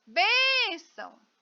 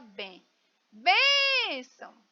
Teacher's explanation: Olha eu demorei mais na bem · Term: sílaba mais forte